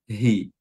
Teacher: Hi itu makhrajnya di mana? Adanal halq, tenggorokan bagian bawah. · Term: huruf ha